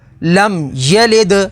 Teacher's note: دال حروف قلقلہ میں سے ہے تو یہاں پر قلقلہ ہوگا